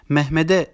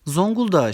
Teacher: özel isimlerin sonunda bulunan sert ünsüzler yazarken yumuşamaz okurken bunları yumuşamış gibi okuruz